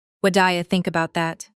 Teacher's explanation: That D sound linking what and do is called a flap T, extremely common in American English.